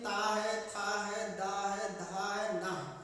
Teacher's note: अगर हम जब ता पढ़ेंगे तो हमारी जबान जो होती है सीधे जाके दांत से टकराती है। ता है, था है, दा है, धा है, ना है, ये जो ध्वनि निकल रही है ये दांतों को टच करते हुए बाहर निकलती है। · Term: ता वर्ग